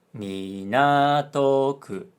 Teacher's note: 港区, which is a name of a place. 港区, low, high, high, low. So they have the same pitch pattern.